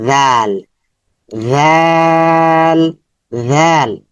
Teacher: জাল জাল জালের মাখরাজ হচ্ছে যেহবার আগা সামনের উপরে দাঁতের আগা যেহবার আগা সামনের উপরে দাঁতের আঘাতে স্পর্শ হবে এবং নরম সাউন্ড হবে নরম পাতলা সাউন্ড হবে